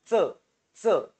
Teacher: च चा वर्ग म्हणजे च काय तालव्य तालव्य म्हणजे काय तुमचा जो टाळू आहे टाळू त्याला तुम्ही जीभ लागते बघा